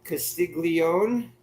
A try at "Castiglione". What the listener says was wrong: Castiglione. Yeah, the G's not pronounced. Castiglione.